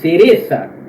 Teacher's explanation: na Espanha, galera, o C, no caso, la C, é pronunciado com a língua no meio dos dentes